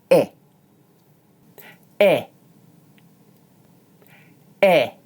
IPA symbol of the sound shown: ɪ